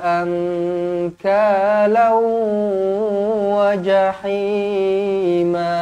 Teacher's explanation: Kemudian nun kosong bertemu dengan kaf, ikhfa hakiki, dengung dua harakat. Kemudian tanwin tak selari bertemu dengan waw, idgham ma'al gunnah pun sama juga, dengung dua harakat